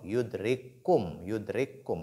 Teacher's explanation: kaf et kaf, la première kaf porte sukun. Elle est assimilée. Elle est introduite dans la seconde.